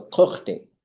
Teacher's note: When you go kuch, low tone, and short, and you put day on it, you should go kuch day.